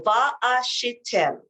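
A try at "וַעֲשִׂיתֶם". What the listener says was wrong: Si. It's a sin. Va asitem.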